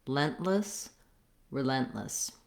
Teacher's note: because lent is the stress syllable, it's going to be longer. The vowel in lent is the red tent vowel.